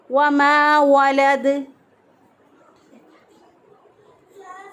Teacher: اور دال جو ہے یہ ساکن ہے، ساکن حالت میں کیونکہ دال پہ ہم وقف کر رہے ہیں تو دال ساکن ہو جائے گا، تو ساکن حالت میں اس پر قلقلہ ہوگا